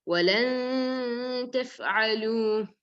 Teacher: you have to hide the noon with the gunna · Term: ikhfa